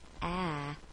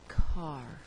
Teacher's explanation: in the word cat is a short a sound a but if you change the T to an R it changes the way that you voice the vowel it actually causes you to close your mouth just a bit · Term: R controlled vowels